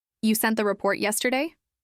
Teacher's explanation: without rising intonation and without any rhythm shift, it came out sounding flat and firm, almost like a statement.